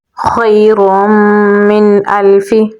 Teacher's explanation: میم کو ہم نون کے ساتھ ملائیں گے. نون کے بعد حمزہ ہے تو یہاں پر ہم اظہار کر کے پڑھیں گے